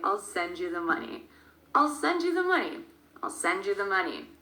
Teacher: So you can probably hear the word send. That is a verb that sticks out. We stress the verb because the verb and the noun money is, well, they are the most important points in this sentence.